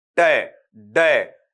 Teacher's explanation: तो आपकी जीभ कहीं ना कहीं क्या करेगी, हल्का सा मुड़ेगी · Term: अल्वियोलर